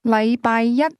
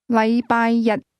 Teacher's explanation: the word one used with Monday is pronounced with a high level tone, while the word day is pronounced with a low level tone